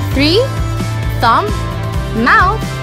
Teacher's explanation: These words blow TH.